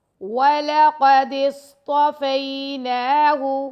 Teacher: نون کو 2 سیکنڈ تک لمبا کریں گے اور ہا پیش ہو کو لمبا نہیں کرنا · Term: نون کھڑا زبر